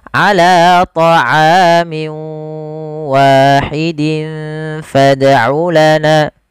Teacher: Maka cara membacanya yaitu masukkan tanwinnya ke huruf waw, kemudian dirubah suaranya menjadi huruf waw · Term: idgham bi gunnah